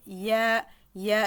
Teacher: Pour le ya, l'air ne va pas passer. Là, pour le ya, la langue va également remonter vers le palais dur vers vers le milieu du palais dur sans le toucher et l'air ici ne va pas passer. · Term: le son y